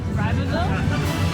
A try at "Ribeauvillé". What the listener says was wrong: Ribeauvillé. There is an accent.